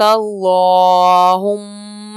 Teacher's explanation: میم پہ شد ہے، میم میں غنہ کریں گے۔ یہ بھی ہم پچھلے اسباق میں پڑھ کے آ چکے ہیں کہ میم مشدد اور نون مشدد میں غنہ کیا جاتا ہے۔